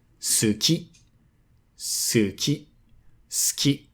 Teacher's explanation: So here you can devocalize the u in su